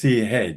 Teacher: Ch is aspirated palatal. This is unaspirated palatal,